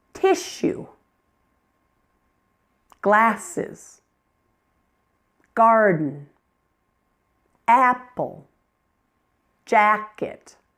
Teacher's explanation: And each one is stressed on the first part of the word.